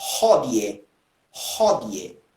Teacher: Lembrando que eu não posso dizer Regina com o som do Re, porque senão você vai confundir aí quando você utilizar formas que têm o H, que é uma pronúncia aspirada